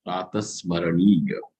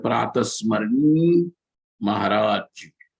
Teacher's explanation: the akara is gone, yakara also is gone